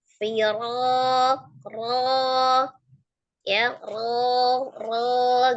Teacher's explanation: Ro fathah dibaca dengan tebal, tafkhim, tapi dengan tidak memajukan bibir, bukan firo, tapi firo, ro ya, ro gitu ya.